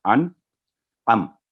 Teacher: नून साकिन के बाद क्योंकि आइन हरूफे हल्किया में से है, तो अन यहाँ गुन्ना नहीं होगा